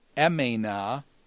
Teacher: So it's emena, and you can see with the dropping of the sigma, the vowel lengthens from an epsilon to a diphthong epsilon iota. Emena, meaning I remained.